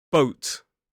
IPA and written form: bəʊt (boat)